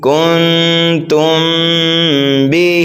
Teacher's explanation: اس میں جو ہے غنہ کر کے پڑھیں گے، کیونکہ میم ساکن کے بعد حرف با آ رہا ہے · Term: اخفاء شفوی